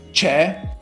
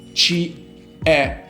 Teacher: Especially if you place ci before words starting with the vowel e, it is important to elide the e from ci. In fact, if we have the stressed e from the verb to be e, if I have to say is in it, in Italian is ci e. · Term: elision